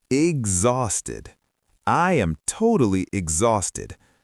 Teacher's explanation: The letter H is completely silent.